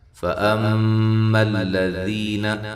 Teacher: میم مشدد بے غنہ ضروری ہے، حمزہ کو تحقیق کے ساتھ ادا کرنا ہے